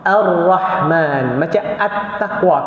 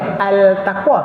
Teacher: Kalau idgham syamsiyah, dia masuk terus kepada huruf sebelah dia, lam tu dibuang.